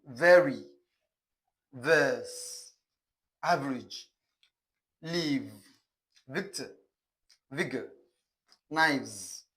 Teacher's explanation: This sound is described as voiced labiodental fricative. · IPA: /v/